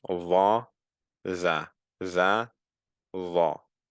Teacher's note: Now the va is a heavier form of the za. The za, the back of the tongue is flat pretty much. The va is coming up, and thus it's making it heavier. But the tip of the tongue is still at the exact same place.